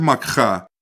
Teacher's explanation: The word makha has guttural aspiration